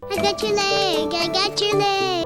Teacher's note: when we have a word ending in T followed by a word like you or your, it morphs into a ch sound. Got your becomes got your.